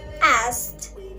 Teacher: But in its past tense, asked, there is a loss of the velar stop accompanied by a change of D to T. While change of D into T is due to assimilation, this disappearance of K is the result of elision.